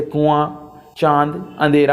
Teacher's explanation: इसके उच्चारण के समय हवा नाक तथा मुख दोनों से दबाव के साथ बाहर निकलती है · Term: अनुनासिक